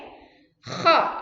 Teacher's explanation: Cara mengucapkan huruf kho di tenggorokan kalian sampai seperti ada dahaknya.